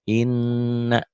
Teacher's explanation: Kalau ada tanda sabdu, tanda pendobel, ini sidah, berarti nunnya 2, satu mati, satu hidup · Khusus nun dan mim, ini nun. Nun dan mim bertasydid bukan hanya ganda, bukan hanya double, tapi ditahan, ada madnya, ada panjangnya, dan ada dengung ke hidungnya. Kalau huruf yang lain nggak boleh ditahan, nggak boleh dengung. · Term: gunnah